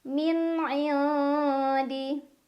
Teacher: Cara bacanya nun sukun dibaca samar-samar ke huruf dal sambil dengung. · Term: ikhfa aqrab